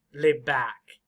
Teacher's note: the very loud word is back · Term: stress